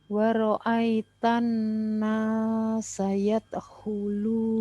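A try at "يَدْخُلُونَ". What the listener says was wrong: Yad, mantulnya belum pas dalnya. Yad.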